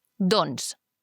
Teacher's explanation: quan diem doncs, la C normalment no es pronuncia